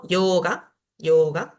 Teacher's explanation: Alargo la O porque es un sonido largo.